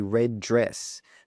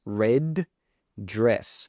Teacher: There are two D's, but we only say one. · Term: connected speech